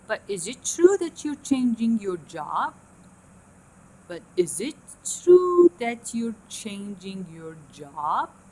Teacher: The start is low and the end is high. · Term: glide up